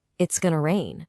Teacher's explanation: when you say it's that sharp, crisp S sound, kind of like a snake